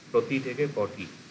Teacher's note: যেটা মূর্ধন্য ছিল না, যেমন ত মূর্ধন্য নয়, হয়ে গেল পটি, প্রতি থেকে পটি, টটা এখানে মূর্ধন্য ভবন হচ্ছে